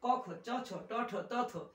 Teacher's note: ক খ চ ছ ট ঠ ত থ এগুলো গাম্ভীর্যহীন, তাই এরা অঘোষ